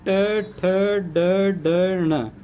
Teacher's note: क्योंकि जीभ इनके इन वर्णों में जीभ किसको टच करेगी मुर्दा को टच करेगी इस वजह से मुर्दा उच्चारण स्थान हो जाएगा